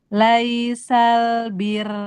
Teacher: Adapun ketika wakof, ro-nya dibaca tipis karena melihat harokat kasroh sebelumnya. · ro-nya jadi tipis karena rnya sukun dan sebelumnya kasrah